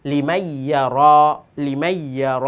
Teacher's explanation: তো গুন্নাও হবে এবং দুইটা শব্দ মিলে গেল